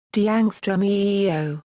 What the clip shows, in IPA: d͡ʑu͍ːɡo